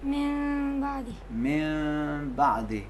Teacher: نون ساکن اور تنوین ایک میم کی طرح میم میں چینج ہو جاتے ہیں، لیکن ایسی میم کہ جس میں ہونٹ آپس میں مکمل نہیں ملتے ہیں، اتنا فاصلہ رہے کہ ہوا کا جریان، ہوا کا فلو باقی رہے، ہوا نکلتی رہے۔ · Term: اقلاب